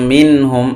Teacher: মিম নুন জের মিন, হামিম পেশ হুম, মিন হুম। এখানে নুন সাকিনের পরে হা আসছে, এজহার হয়েছে, স্পষ্ট করে পড়তে হবে। কারণ হলো হা হলো এজহারের অক্ষর।